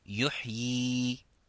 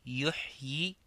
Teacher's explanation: on dit que yuhyi avec un mad, un allongement du mad, du ya